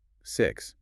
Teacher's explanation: The word begins and ends with the exact same unvoiced sound.